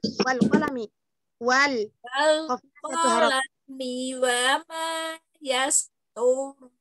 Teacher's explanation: jangan diseret bacanya la, la-nya satu harokat, la, mi-nya satu harokat, mi